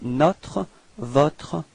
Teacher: And then notre, open, this O is not that closed, okay, it's quite open